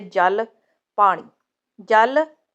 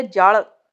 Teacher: ਜਦ ਤੁਸੀਂ ਬੋਲਦੇ ਹੋ ਜਲ ਤੁਸੀਂ ਨੋਟ ਕਰੋ ਕਿ ਤੁਹਾਡੀ ਜੀਵ ਉੱਪਰਲੇ ਦੰਦਾ ਦੇ ਅੰਦਰਲੇ ਪਾਸੇ ਨੂੰ ਛੁਂਦੀ ਹੈ। ਜਦੋਂ ਤੁਸੀਂ ਲੱਲੇ ਪੈਰ ਬਿੰਦੀ ਦੇ ਉਚਾਰਨ ਕਰਦੇ ਹੋ ਉਸ ਸਮੇਂ ਜੀਵ ਉਲਟ ਕੇ ਕਠੋਰ ਤਾਲੂ ਨਾਲ ਛੁੰਦੀ ਹੈ